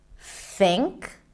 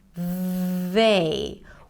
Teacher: One is the voiceless TH, or some people call it the soft TH, where it's just air coming out between the tongue and teeth.